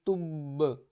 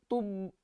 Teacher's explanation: साकिन की सूरत में क्या होगा कि बा के ऊपर कलकला होगा